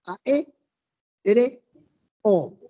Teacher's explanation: tiene el acento en la e